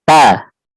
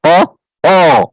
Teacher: Ta punya sifatnya dia turunnya pangkal lidah.